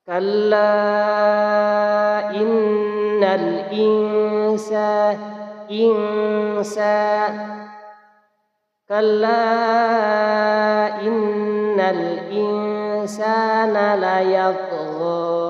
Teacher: Di sini juga ada bacaan ikhfa hakiki, dan sukun bertemu dengan huruf sin. Bacanya harus samar dan didengungkan dua ketukan atau dua harokat.